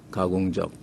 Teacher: 우리 남한 말에서는 가공적 해서 끝에 적이 순한 소리로 나죠 예사 소리 가공적 변 소리가 아닙니다 입니다 근데 북한에서는 가공적이 적으로